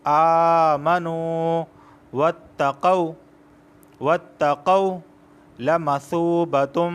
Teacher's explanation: واو ساکن سے پہلے پیش آیا ہے، اس وجہ سے میں نے سو کو کھینچا ہے۔